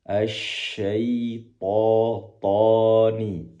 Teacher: To ke tempat tumbuhnya gigi seri atas atau gusi atas. To sambil mengangkat pangkal lidah ke atas karena to merupakan huruf yang tebal.